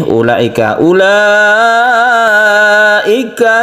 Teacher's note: mad wajib muttasil kita panjangkan sampai 5 harokat